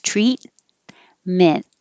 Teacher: you don't have to release either of those t's treat meant and just hold it there instead of treatment treatment